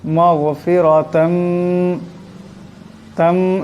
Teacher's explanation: তার উপর দুই জবরের তানবিন, এরপর মিম আসছে, ঈদগাম হয়ে যাবে, ঈদগামের একারে পরিমাণ গুণনা হবে